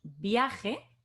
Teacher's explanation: Entonces, la A es la que tiene la fuerza. Y la I es una vocal átona, que no tiene fuerza